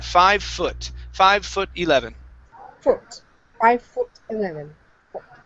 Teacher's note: so instead of FO foot it's an uh sound here